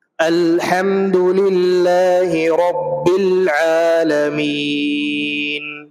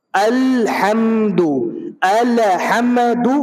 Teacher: جب آپ پڑھتے ہیں الحمد تو آپ حمزہ کو, الف جس کے اوپر زبر ہے وہ حمزہ بن گیا, حمزہ کو جب آپ لام سے ملاتے ہیں تو وہاں پہ قلقلہ نہیں ہونا چاہیے, الحمد نہیں ہونا چاہیے. · دونوں جگہ آواز لام میں مل کر کے رک جائے گی, دوبارہ واپس نہیں آئے گی